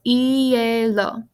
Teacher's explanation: See how the I and the E are together, but we pronounce it as two separate sounds, two separate vowels.